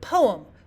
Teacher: we've got the first part being stressed and the second part of the word being unstressed